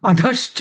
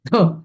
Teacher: ध ला धच म्हटलं पाहिजे द असं नाही सौम्य नाही